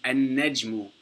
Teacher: So we don't pronounce the lam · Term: sun letter